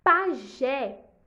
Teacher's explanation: Pajé é uma oxítona, porque a última sílaba é a sílaba tônica.